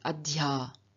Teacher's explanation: And in adi agam, meaning to come upon or to find something, we have a third person singular adya gacchati, where the adhi, the I in the adi, has changed into a y in front of the a, and so we don't get adi a, but we get adya. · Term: semi-vowel counterparts